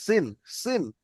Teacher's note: নোক্তা নাই, এটি হচ্ছে সিন, অর্থাৎ দন্তের স উচ্চারণ করতে হবে, সিন, সিন। আর সিন।